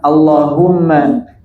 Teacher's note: Kalau Musad Timur Tengah seperti ini harakat biasa tapi tetap dibaca panjang semua lafzul jalalah panjang